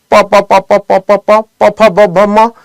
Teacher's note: आपको प फ ब भ म बोलने के लिए लिप्स चिपकाने ही पड़ेंगे